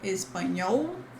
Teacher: But in Portuguese, we have espanhol. Remember that in the end of syllables, this L has the sound of U